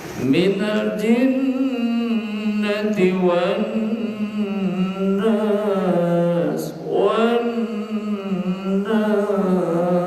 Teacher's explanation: jinnya ada nun bertasdid, itu dibaca gunnah ya. Minal jinnati, jin, gunnah itu artinya dengung, harus didengungkan.